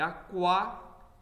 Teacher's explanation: esse quá, observe que o U é pronunciado, então esse Q com esse U não é um dígrafo, né?